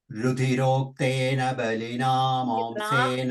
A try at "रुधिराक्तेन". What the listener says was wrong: Rakteena, not rudirokteena, rudirakteena. Ra. Ah.